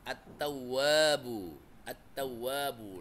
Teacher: langsung alif lamnya enggak dibaca, langsung masuk ke huruf ta. · Cara bacanya dengan mengidghamkan atau mentasydidkan ke dalam huruf hijaiyah sehingga alif lam tidak dibaca meskipun tulisannya ada.